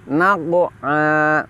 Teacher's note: Di sini kita dapati qaf sukun, di mana qaf adalah huruf tafkhim, berada setelah huruf nun, di mana nun adalah huruf tarkik. Maka kita harus menipiskan huruf nun fathah dan menebalkan huruf qaf sukun.